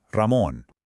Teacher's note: the famous R ere, which is often rolled to get that perfect Spanish rhythm, Ramon. And this this is basically the symbol of the Spanish language.